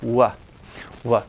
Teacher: it's actually a labial velar because you're using the velum the velum is moving the back of the tongue is moving